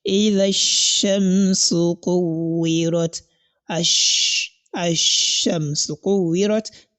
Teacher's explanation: We've not heard the sound of this letter lam, that is the lam ta'rif